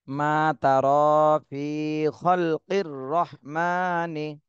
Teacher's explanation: তাহলে দুই একজনে কিন্তু ফিতে টান হচ্ছে না, ফিতে একটু টান দিতে হবে, এখানে মদের হরফ।